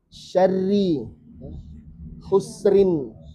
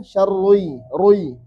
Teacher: ra dibaca tipis ketika dia kasrah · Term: ra tipis